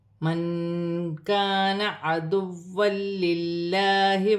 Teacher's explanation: نون ساکن میں اخفا ہوگا، الف مدہ بن رہی ہے، دو زبر کی تنوین کے بعد لام مشدد آ رہی ہے، تنوین میں غنہ نہیں ہوگا، لام باریک پڑھی جائے گی.